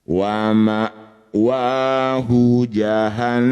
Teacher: Hati-hati tetap didengungkan dua harakat. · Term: gunah musyaddadah